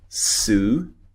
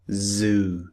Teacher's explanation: Because this the position of the tongue in the mouth is exactly the same in both sounds. The only difference between the two sounds is that one of them is voiced and one of them is unvoiced.